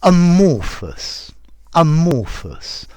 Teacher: notice it starts with schwa